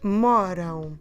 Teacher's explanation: The stress is now back to mo. We only have two syllables again, and our ending now is am. Moram. To pronounce correctly this ão at the end, we really need to close our lips at the end.